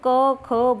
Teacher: जब हम क ख बोलते हैं तो आवाज हमारे गले से आती है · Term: कंठ व्यंजन